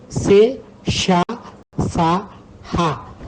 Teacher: ఊష్మాలు అంటే గాలిని బయటకు ఊదుతూ పలికే అక్షరాలు అని అర్థం